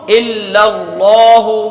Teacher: لا کو ایک الف کھینچیں گے، حمزہ کو نہیں کھینچیں گے، پھر لام کو ایک الف کھینچیں گے۔